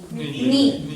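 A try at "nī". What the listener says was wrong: Ni, long E, right?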